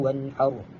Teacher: Huruf ha ialah huruf pada huruf ha ialah huruf izhar hali. Jadi bacaan dia tidak perlu dengung tanpa tanpa ghunnah.